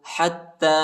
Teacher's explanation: حا کو تا کے ساتھ ملائیں گے، تا کو شدت کے ساتھ سختی کے ساتھ پڑھیں گے، اور تا پر کھڑا زبر آیا ہے، اس کو ایک الف کے مقدار تک کھینچیں گے۔